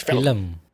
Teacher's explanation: Yeah, I say it like 2 syllables. You're supposed to say it like 1 syllable.